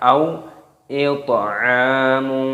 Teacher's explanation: toknya berharokat sukun dimatikan dan dibaca qalqalah ataupun dipantulkan suaranya